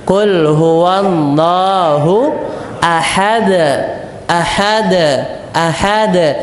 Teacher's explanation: dia berada di akhir ayat atau huruf yang paling terakhir ketika wakaf maka pantulannya besar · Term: Qalqalah Kubro